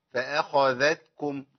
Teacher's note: فأخذ همزة مرققة فآ خاء مفخمة فأخ ذا المرققة